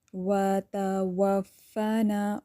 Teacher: वाव को अच्छे से होंठों को गोल करना है। वाव के लिए दांतों का इस्तेमाल नहीं करना